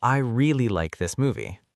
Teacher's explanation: The word really becomes stronger because it adds emotion. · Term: Sentence stress